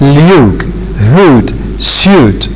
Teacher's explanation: both of them are back vowels and both of them are high vowels